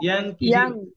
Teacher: জিহ্বা লেগে যাবে গোড়ায়